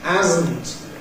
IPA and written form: ˈhæzn̩t (hasn't)